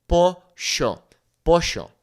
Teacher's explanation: in certain countries like Argentina, they might say something like sh